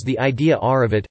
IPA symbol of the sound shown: r